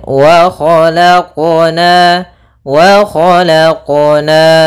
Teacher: Harusnya dalam pelafalan qalqalahnya tidak ada tambahan hamzah ataupun saktah. Ya, kan tapi dia langsung saja mengalir.